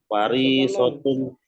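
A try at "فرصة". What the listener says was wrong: bukan fariso ya, fursah, fursatun.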